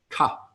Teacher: A dot under a T is a T that is pronounced further back, the tip of your tongue, ta, in the middle of the roof of your mouth